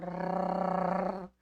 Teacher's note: como o R, que tem uma envergadura de língua para fazer o rrr. É um tremor mais difícil.